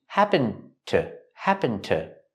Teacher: We see the D in happened linked to the T.